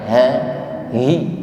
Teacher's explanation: Kita ucapkan dengan sifat jahr, lantang, makharijul huruf ha ada di aqsal halqi, tenggorokan paling bawah. Suaranya ini besar, mantap saya katakan.